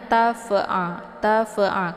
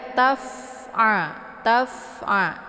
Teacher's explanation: Fa sukun ya fasukun adalah sifatnya Hamas jadi ada dosis anginnya maka cara bacanya dialirkan saja ya Sambil dibunyikan anginnya tapi tidak dengan cara dipantulkan jangan tafa'a tafa'a keluar bunyi vo ya Itu bacaan yang salah · fa ini posisinya yaitu perut bibir sebelah dalam bagian bawah berjumpa dengan 4 gigi seri ya, ujung gigi seri bagian atas. Taf ya.